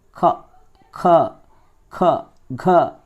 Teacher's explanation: ఖ ఆ అనేటప్పుడు చూసారా కంఠం నుంచి వస్తుంది క ఖ ఖ ఘ ఇవన్నీ కూడా కంఠం నుంచి వచ్చేవి కాబట్టి కంఠ్యాలు అయ్యాయి అన్నమాట